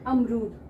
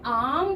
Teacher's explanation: जैसे हमने आम बोलना है, आम शब्द लिया है ना, आम खाना है, और अमरूद। अमरूद जब हमने बोला तो जल्दी से अ की साउंड खत्म होके म पर चली गई, लेकिन जब हमने आम बोला तो कितनी देर पूरा मुंह खोलना पड़ा हमें। आम, म पर जाने से पहले दुगना समय आ पर लगा, फिर हम मा पर आए, है ना। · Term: दीर्घ